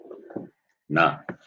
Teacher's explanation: Na, cerebral. Cerebral as well as nasal.